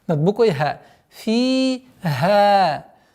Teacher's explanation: Вторая долгота в размере двух огласовок фатха. Над буквой ха.